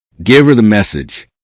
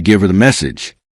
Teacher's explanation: This may sound closer to give her the message. The H in her becomes weak, allowing the final V and give to connect smoothly.